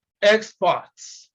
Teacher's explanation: when we want to use it as a noun, we have to stress the first syllable, even if it is a prefix